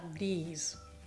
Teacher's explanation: la pronuncia è proprio stretta molto corta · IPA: / ðɪs /